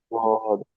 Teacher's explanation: দদ বলার সময় আপনার জিভের পাশে, যে কোনো পাশ থেকে, জিভের যে কোনো পাশ থেকে আপনার হাওয়াটা বের হবে, বায়ুটা পাস হবে, ঠিক আছে?